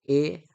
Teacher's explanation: कंठतालव्य म्हणजे कंठ आणि तालू यांचा एकंदरीत जो स्वर आपल्याला पाहायला मिळतो